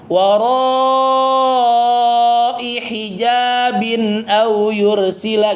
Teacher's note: pastikan i-nya cuma 1 harokat